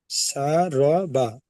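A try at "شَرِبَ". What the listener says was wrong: তাহলে শাটা একালি পরিমাণ টান দিতে হবে। শা, রবা, শা, রবা।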